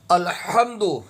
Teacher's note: ہا کی ادائیگی حلق سے ہوگی